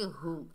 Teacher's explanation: हा के ऊपर पेश बगैर खींचे पढ़ेंगे हु। हो नहीं पढ़ना, मजहूल है, हु पढ़ना है।